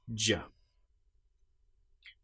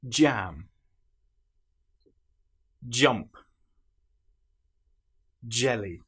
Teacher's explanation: And then you release J. You can feel the vocal cords engaging because this is the voiced sound.